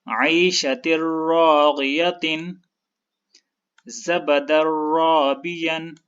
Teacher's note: یہاں پر آپ دیکھیں دال کے اوپر تنوین ہے اور تنوین را کے ساتھ شد کی وجہ سے جڑا ہوا ہے تو ان دونوں حروف کے ملنے کی وجہ سے ادغام ہوگا. اور جیسے کہ اس تنوین کے بعد را ہے تو اس ادغام کے ساتھ غنہ نہیں ہوگا. تو اس کو اس طرح پڑھیں گے عیشۃ راغیۃ زبد رابیا.